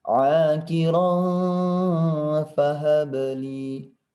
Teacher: di sini ada ikhfa, maka dia harus dinenggungkan dengan samar-samar